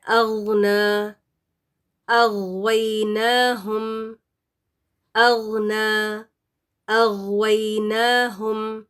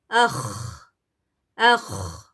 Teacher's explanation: یہ جو خا ہے نا، یہ بالکل منہ کے قریبی حصے سے نکلتے ہیں غین اور خا. اور اس میں یہ ہے کہ خراش تھوڑی سی آنی چاہیے، ہوا جاری رہے گی خا کے ساتھ.